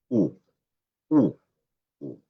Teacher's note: La U, efectivamente es una vocal U que se produce atrás, es alta, se produce arriba, pero atrás